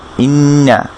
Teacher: এরপরে এখানে দেখি যে হামজার নিচে ই যোগ করা ই, এই ইটা গিয়ে নুন, এটা এক দাগের উপর একটা নুক্তা, এটা নুন, নুনের উপর তাসদিদ দেয়া, একটা দাগের উপরে একটা নুক্তা, এটা হচ্ছে নুন, নুনের উপর তাসদিদ দেয়া। তাহলে নুন তাসদিদ কী হয় বলেছিলাম, গুন্না হয়। তাহলে ইন ইন গুন্না করে ধরবো, তারপর নুনের উপর ফাতহা দিয়া না, ইন্না।